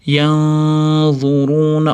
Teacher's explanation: Afala lamdan keyingi alifni cho'zamiz. Yanzuruni ixfo kelyapti. Nunni zodi chiqaradigan joyga yashiramiz.